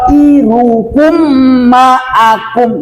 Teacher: Jangan iruku, misalnya irukum ma'akum. Irukum panjangkan 2 harokat sebab ada mim mati ketemu dengan mim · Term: idgham mislain shogir